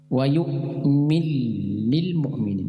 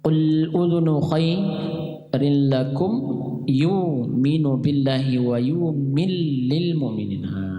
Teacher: Dia langsung memasukkan idgham ke dalam huruf lam disertai dengan shaddah, sehingga 'min-ul' menjadi ' mil-lil-mu'minin'. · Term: idgham kabir